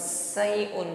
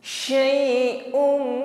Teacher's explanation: Sayun, nah bukan sayun, bukan sekedar di ujung lidah desisnya, tapi di sini shin memiliki sifat tafasyi, intisyarur riha fil fami, menyebar angin di dalam mulut kita.